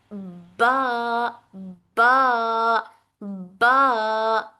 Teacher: इस तरह होता है कि हर्फ के मखरज पर हवा का रास्ता बंद कर दिया जाता है। यानी जब दोनों होठ बंद होते हैं तो हर्फ बा अदा होता है। तो जब दोनों हंठ बंद हो जाते हैं तो फिर वहां पर हवा नहीं निकलती बल्कि हवा रुक जाती है। · यानी जब दोनों होठ बंद होते हैं तो हर्फ बा अदा होता है। तो जब दोनों हंठ बंद हो जाते हैं तो फिर वहां पर हवा नहीं निकलती बल्कि हवा रुक जाती है। ब बा पर आवाज नहीं निकलती जिसके नतीजे में सांस का जारी रहना रुक जाता है।